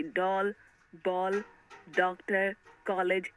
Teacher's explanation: अंग्रेजी भाषा से आए शब्दों में औ का उच्चारण हिंदी आ से भिन्न होता है। यह ओ तथा औ के मध्य का प्रतीत होता है। अतः उन शब्दों के ऊपर चिन्ह लगाया जाता है। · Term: आगत वर्ण